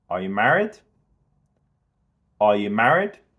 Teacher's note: we can really emphasize the rising intonation on the word married. And we go quick over are you.